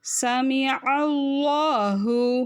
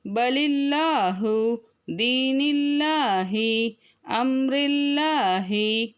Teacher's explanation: அந்த அந்த அல்லாஹ், அதாவது வல்லினம் அப்படிங்கிறது எப்படின்னா, அந்த அல்லாஹ் அப்படிங்கிற வார்த்தையை சொல்லும்போது நாக்கை இஸ்தியலா எழுத்துக்கு சொல்கிற மாதிரி, அதாவது ஹெவி லெட்டருக்கு சொல்கிற மாதிரி நாக்கை நல்லா உள்நாக்கை உயர்த்தி சொல்லணும் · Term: வல்லினமாக